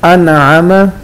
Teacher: नून साकिन के बाद आइन है, गुन्ना नहीं करना। अनअम नून वाज़े करेंगे।